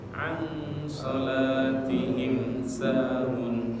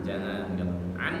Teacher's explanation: Ikhfa itu dibaca sama, dia ada mendengungnya an karena ketemu shad, ketemu shad agak mendengung.